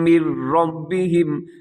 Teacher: یہاں نون بالکل ختم ہو جائے گا، یعنی میم کو آپ ڈائریکٹ را کے ساتھ ملائیں گے، اس کو کہتے ہیں ادغام۔